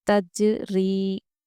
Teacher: ری حروف مدہ ہے، یا سے پہلے زیر، ہم اس لیے اس کو کھینچ کے پڑھیں گے